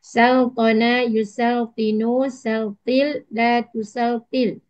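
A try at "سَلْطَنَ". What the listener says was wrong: Kenapa gunakan lam? Saltin, bukan saltil.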